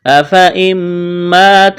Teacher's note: یہاں پر نون کا میم میں ادغام کریں گے، غنہ کریں گے